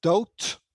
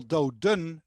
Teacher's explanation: the d is at the end of the word then it's pronounced as a t